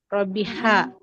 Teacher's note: untuk huruf H, dia harus tetap di tengah tenggorokan